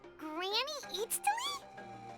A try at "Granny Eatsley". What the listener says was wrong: But emphasis on Eatsley, not Granny.